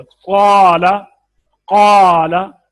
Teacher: काफ पुर है, अलिफ भी पुर हो गया